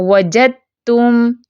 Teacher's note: اب اگلی مثال دیکھیں، ہوگا دال کا تا میں، دال ساکن ہے تا متحرک ہے، تو لکھا کیسے جاتا ہے، وجدتم، ٹھیک ہے، دال ساکن اور تا متحرک، ہم کیسے پڑھتے ہیں، وجدتم، دال کی کوئی آواز نہیں، تا کی صرف آواز ہے